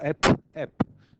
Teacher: to make the oral closure, complete oral closure, we use both lips. So we call it bilabial. So it is a stop.